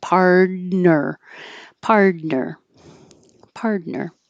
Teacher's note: The T and the N are in the same place. Pard, but it's going to sound like a D because the T is between two voiced sounds